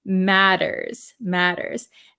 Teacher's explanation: these T's are a flap T in American English so we say we it sounds like a D sound matters